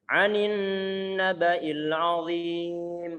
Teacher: Nun bertasydid ini termasuk bacaan gunnah. Gunnah yang paling sempurna di sini. Berarti paling lama penahan suara gunnahnya.